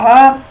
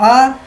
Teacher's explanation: عین کو گلے کے بیچ میں سے، حلق کے بیچ میں سے